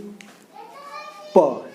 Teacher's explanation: अगर हम लोग देखिए प वाले को, ठीक है, प को, तो आप बोल करके देखिए प, न ये दांत रोक रही है ना कुछ नहीं, डायरेक्टली आपके जो होंठ है दोनों ये जुड़ेंगे प फिर निकल रहा है। तो ये दोनों के वायु जो है हमारा कहाँ पे रुक रहा है, होठ।